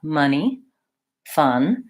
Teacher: stressed schwa it's in the stressed syllable of the word money the first syllable is stressed and stretched so it sounds like a money fun I hold that slightly